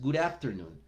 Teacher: Good terminando en una letra consonante, afternoon comenzando en una letra vocal, junto los sonidos.